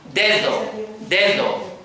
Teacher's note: la primera D es oclusiva, la segunda es fricativa